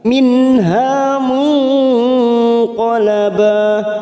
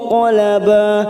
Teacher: nun sukun bertemu qaf ikfa hakiki, kita samarkan 3 ketuk